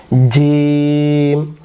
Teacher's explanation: জিম শক্ত করে জিহ্বার মাঝখান থেকে। জিহ্বার মাঝখানটা উপরের তালুতে লাগবে।